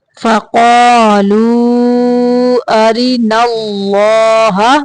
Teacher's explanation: اللہ کلام موٹا پڑھیں گے